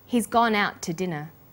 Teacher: the final t sound in out is held slightly longer